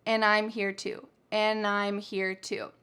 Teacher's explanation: We have the word and that has the d completely taken off. So, it's going to sound like and. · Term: reductions